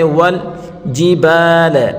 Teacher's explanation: واو کو لام کے ساتھ ملا کر پڑھیں گے. والجبال، با الف زبر با، یہ الف مدہ ہے، اس کو ایک الف کی مقدار کھینچ کر پڑھیں گے. والجبال، او حمزہ واو زبر او، یہ ہے واو لین ہے، حروف لین کو نرمی کے ساتھ اور تھوڑا جلدی پڑھیں گے.